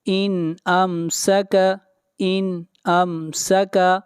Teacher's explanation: یہاں پر نون ساکن کے اوپر اظہار ہو رہا ہے، نون کو ظاہر کر کے پڑھیں گے